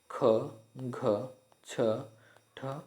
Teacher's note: महाप्राण ऐसे व्यंजन जिनको बोलते समय मुख से अधिक वायु निकलती है उन्हें महाप्राण व्यंजन कहते हैं जैसे ख घ छ ठ आदि